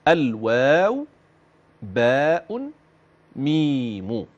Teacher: قال للشفتين الواو الواو الواو باء باء باء ميم ميم ميم اذا مخرج هذه الحروف الثلاث من بين الشفتين